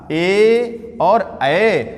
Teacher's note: ए और ए का उच्चारण स्थान ये कंठ और तालु से मिलकर के होता है।